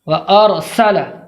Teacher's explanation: پہلے زبر ہو تو ہمیشہ را کو پر پڑھیں گے، وارسل، سین کو بالکل واضح صاف طور پر پڑھیں گے کہ اس میں سیٹی کی آواز ظاہر ہو جائے